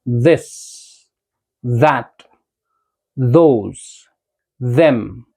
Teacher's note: ये सारे साउंड्स इसी तरीके से आते हैं जब हम अपनी टंग को अपने टीथ के बीच में रख दें